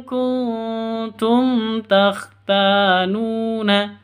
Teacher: nun mati bertemu dengan ta samar siap didengungkan samar disertai dengung siap-siap ke huruf tnya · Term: ikhfa Hakiki